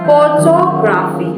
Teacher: in the word photographic, the stress falls on the first syllables photographic, but there is also a little stress on the third syllable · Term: secondary stress